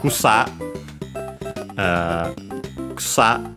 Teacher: accented on the last syllables, on the sa, and of course the u is barely heard, if at all, between unvoiced consonants